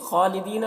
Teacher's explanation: را کو پر پڑھیں گے، را کے اوپر پیش ہے. خالدین، خا کو پر پڑھیں گے، خا حروف مستعلیہ میں سے ہے